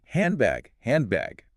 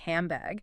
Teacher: It assimilates into an M sound because your lips are naturally preparing for the B in bag. It sounds like handbag.